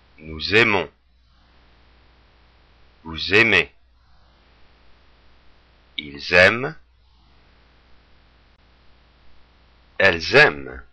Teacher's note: Now you notice that how in the plural form, when we have the S at the end of nous, vous, il, elle, we make the liaison. We make that S heard. And particularly with il and elle, it allows us to make the difference between if we're talking about just one person or a group of people.